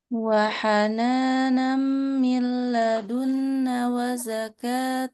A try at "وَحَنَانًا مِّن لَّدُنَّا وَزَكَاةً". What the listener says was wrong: Panjang. Min ladunna dua harkat. Min ladunna.